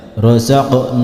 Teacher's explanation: Nah, bukan seperti itu, karena huruf mim bukan huruf qalqalah, maka huruf mim yang berharokat sukun tidak boleh dipantulkan